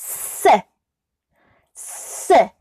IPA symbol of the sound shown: s